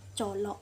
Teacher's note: bunyi kontoid afrikat lamino alveolar tidak bersuara dan tidak beraspirasi. Pengucapan bunyi ini dengan menghambat sebagian besar arus udara.